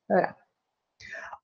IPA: ɾ